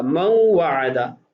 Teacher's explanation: من وعدہ، اصل میں من وعدہ، اب نون ساکن بعد والے کلمہ کی ابتدا میں واو ہے جو حروف یرملون میں سے ہے، تو ادغام کیا جائے گا، تو نون کو واو میں تبدیل کر کے 2 کا ادغام کر کے پڑھا جائے گا اور غنہ بھی کیا جائے گا